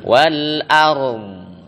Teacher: Suara dotnya masih mengalir suaranya.